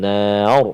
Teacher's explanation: Nar, iaitulah huruf ra yang kita matikan dia dengan sebab nak waqaf. Sebelum dia ada baris atas, iaitu huruf nun. Jadi bunyi dia tebal. Kan? Nar. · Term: bunyi tebal